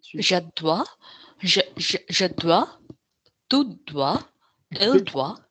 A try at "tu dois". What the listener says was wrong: Dude, I can't hear any joining. Tu dois. Right now, this is 2 words.